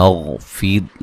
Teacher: غین کو موٹا ادا کریں گے، غین کو ہلانا نہیں ہے